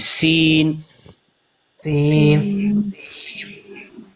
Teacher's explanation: सीन में सीटी की आवाज होगी